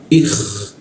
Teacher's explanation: I masuk ke K di atas jakun ya. Ikh ada ngoroknya